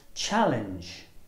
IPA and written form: ˈtʆæləndʒ (challenge)